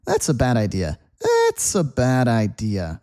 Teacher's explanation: Listen to how the th kind of goes away when I say it quickly.